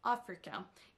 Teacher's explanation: c'est le mot africain qui s'accentue sur la première syllabe